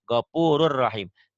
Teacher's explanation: Ditulisnya gopurun, dibacanya gopurur, N-nya nggak ada. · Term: idgham